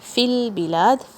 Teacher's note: فی البلاد، فا جو ہے یہ، یا جو ہے یہ لام سے جوائن ہو رہا ہے ادھر بغیر شیک کرے ہوئے